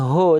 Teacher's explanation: Huruf tebal yang dia berharakat baris atas itu dibacanya akan condong seperti o terdengar vokalnya seperti o